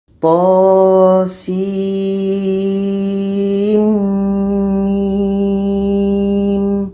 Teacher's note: Ada proses idgham. Jadi di antara sin mim ini di tengah-tengahnya ada dengung. Dengung dua harakat.